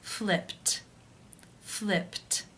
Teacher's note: the final sound of the verb is P which is unvoiced therefore it is case one and the e D is pronounced as a T